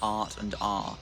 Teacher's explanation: in non-rhotic dialects like British English or Australian English, the R is not pronounced, so you just have a long vowel instead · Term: non-rhoticity